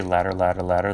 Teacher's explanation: that kind of flip of the tongue on the top of your roof is similar to the R sound